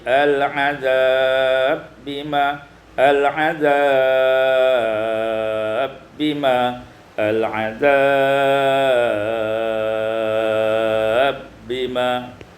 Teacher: ba diidghamkan ba pada ba kazzab bi ayati pada ayat 157 al-azabi bima idghamul ba fil ba diidghamkan ba pada ba menjadi al-azab bima al-azab bima al-azab bima pada ayat 158 ta'tiyahum